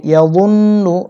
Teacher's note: নুনে তাসদিদ, ওয়াজিব গুণনা, গুণনা করতে হবে